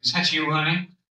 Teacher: el is that muchas veces nada más lo van a pronunciar como isa. Isa.